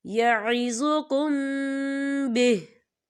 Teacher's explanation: وقف کی صورت میں ہا جو ہے وہ ساکن ہو جائے گا